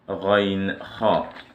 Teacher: the nearest part of the throat to the mouth is the makhraj for 2 letters